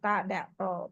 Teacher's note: Tempat tumbuh gigi, ujung lidah menyentuh tempat tumbuh gigi. Atas, tempat tumbuh gigi atas.